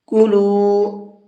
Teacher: ایہا الناس، نون کے اوپر تشدید ہے تو یہاں پر غنہ کر کے پڑھیں گے۔ کلو، لام کو تھوڑا سا کھینچ کر کے پڑھیں گے، اس لیے کہ یہاں پر واو مدہ ہے۔